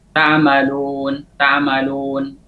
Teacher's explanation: Ketika mengucapkan waw atau mengucapkan al-waw al-maddiyah itu tidak sempurna pada saat mendhammahkan syafatain. Mendhammahkan kedua bibir tidak sempurna. Maka muncul suara seperti o,